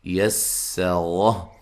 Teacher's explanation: سین کو باریک سیٹی سے ادا کریں گے، اور را کو موٹا ادا کریں گے، تو وقف کی صورت میں ہا کو ساکن کر دیں گے، ٹھیک ہے جی۔